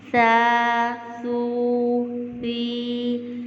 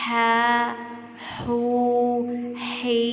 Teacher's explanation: سا میں سیٹی کی آواز نہ آئے اور ہا میں ٹھنڈی سانس کی آواز آئے گی